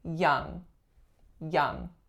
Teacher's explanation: It's a nasal, a velar nasal, so it's young, but there is no g at the end